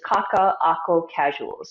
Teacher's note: There's a glottal stop in between two of the A's. Right. So there's a little bit of a that stop.